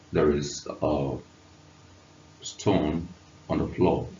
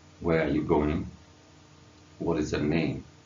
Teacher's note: tone is experienced when there seems to be a fall of the pitch at the end of a sentence or at the end of an expression the pitch seems to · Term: falling tone